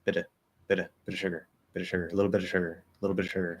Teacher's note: that T in bit is probably going to end up becoming a flapped D instead of bit, or a stop T like bit.